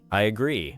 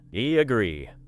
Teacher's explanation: I agree may contain a small y- like connection.